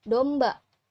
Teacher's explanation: Selanjutnya ada open mid setengah terbuka dengan posisi lidah bagian belakang ada bunyi O